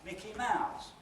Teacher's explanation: Got 2 accents, one on Mick, one on Mouse, but Mouse is the last one, so that's the nucleus.